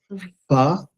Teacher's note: There's air, puff of air that comes out. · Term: aspirant